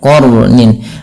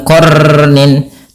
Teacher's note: sifat huruf ro itu sifat takrir tapi takrirnya jangan banyak-banyak